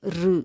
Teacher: ரூன்னு முழுசாகவும் சொல்ல மாட்டோம், ரீன்னு முழுசாக இல்லாமல் ரு, ரெண்டுக்கும் நடுவில் இருக்கக்கூடியது அந்த ஒலி வரும்